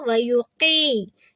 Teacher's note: ویقی، یا سے پہلے زیر، یا ساکن سے پہلے زیر آ جاتی ہے تو مد ہے، آواز 2 سیکنڈ لمبی کریں گے. تو یہاں ہم ہلکا سا نشان لگا لیں گے تاکہ جب ہم پڑھیں تو ہمیں یاد رہے کہ ہم نے یقی کی کو 2 حرکہ کرنا ہے اور یا کو 1 حرکہ رکھنا ہے.